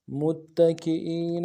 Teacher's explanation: میم کو تا کے ساتھ ملانا ہے، تا کے اوپر تشدید زور دیں گے ، اگلے تا کو نون سے ادا کریں گے، کاف کو